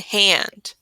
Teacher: It kind of sounds like we're adding uh to the end of the It's confusing because a puff or an unvoiced air through a wide open mouth happens. The push of the air helps it glide right into the vowel that follows it. This unvoiced sound is pronounced quickly through the push of air out the mouth.